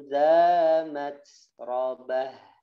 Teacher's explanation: dikasih desis ya suara desis nafas disini sifatnya Hames